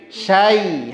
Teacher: Berarti apa namanya, bukan AE tapi AI. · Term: huruf lin